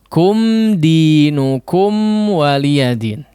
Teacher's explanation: sukun padahal tidak bertemu dengan huruf mim lagi ataupun hurufba ya maka ndak perlu digunakan dengan hunah yang panjang